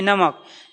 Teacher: नाक और मुख दोनों से एयर निकलेगी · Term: अनुनासिक